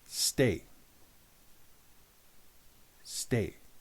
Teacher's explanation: That little change from say to stay has changed the meaning significantly within your mind. The addition of the t sound and a little pause afterwards